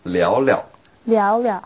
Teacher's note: Now like often when we have the verb repeated like that, the second verb...is pronounced in the light tone, the neutral tone